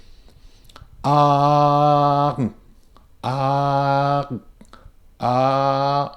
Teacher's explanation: your ah at the beginning remains a pure ah sound. It doesn't migrate from ah to r.